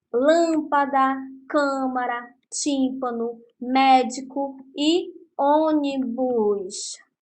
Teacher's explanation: São aquelas em que a sílaba tônica se evidencia onde? Na antepenúltima sílaba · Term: proparoxítonas